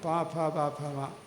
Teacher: ചുണ്ടിൻ്റെ സഹായത്തിൽ ഉച്ചരിച്ചാലോ ഓഷ്ട്യമാവും.